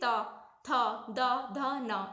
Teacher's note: दांतों के पास टच करती है हमारी जीभ, जैसे कि ता, था, दा, धा, ना।